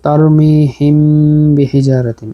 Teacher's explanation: এই যে মিম সাকিনের পরে বা আসছে, ইখফায়ে শফাউই, ইখফায়ে শফাউই গুণনা করব আমরা।